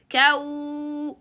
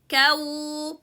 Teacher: Make sure to stretch the lips forward, making the sound continuous without pushing air. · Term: Waw Sukun